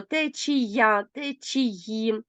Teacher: акація саме тому належать до м'якої групи тому що в них кінцевий приголосний основи звук й а не ч чи звук ц